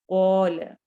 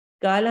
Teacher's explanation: قوف موٹے حروف میں سے ہے، کاف باریک میں سے ہے. کالا نہیں پڑھنا، قول، قوف کو موٹا کرنا ہے.